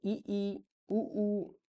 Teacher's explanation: मुख कम खुलता है समव्रत में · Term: संवृत